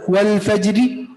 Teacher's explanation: यहां पर अगर आप वक़फ़ बिर्रोम कर रहे हैं तो इस रा को बारीक पढ़ेंगे